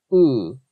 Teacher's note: it was produced almost like a fricative a voiced fricative or a approximate where you have it's it's like your tongue · The U vowel, what's supposed to be an U vowel, actually sounded more like it was produced almost like a fricative, a voiced fricative, or an approximant, where you have, it's like your tongue, the back of your tongue is like raised, almost making some kind of velar consonant. So it's, instead of being ooh, it's like ooh. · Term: velar approximant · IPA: [ɥ̩~ʉ]